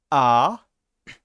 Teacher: And reversely, if you do A, then your tongue will necessarily be at the bottom of your mouth, and your mouth will be quite open.